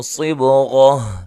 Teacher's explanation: صاد کو موٹا ادا کرنا ہے، با پہ قلقلہ کرنا ہے